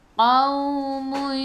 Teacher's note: waw ada sukun, sebelum waw baris atas bacaan lin, bacaannya lembut.